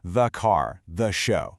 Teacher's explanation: before a consonant sound, it's pronounced with a soft schwa sound